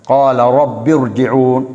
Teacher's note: ரப்பிர் என்ற 2 ராவையும் நாங்கள் வல்லினமாக மொழியக்கூடிய ஒரு நிலை அங்கேயும் ஏற்படுகிறதை பார்க்கிறோம்.